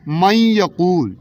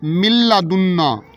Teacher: نون کی آواز ختم کر کے ہم نے لام کے ساتھ ادغام کر دیا